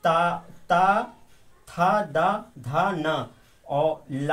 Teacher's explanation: ये सब दंत से बोले जाने वाले वर्ण है